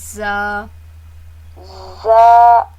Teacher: جی یہ سیٹی والے حرف ہیں, زا سین صاد. ان کو پڑھتے وقت ہمیشہ ان حرفوں میں سیٹی ہوگی